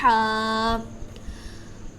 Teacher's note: حا حلق کے درمیان والے حصہ سے ادا ہوتا ہے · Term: مخرج